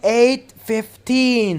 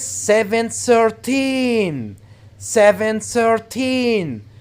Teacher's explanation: stress the last part of the teen numbers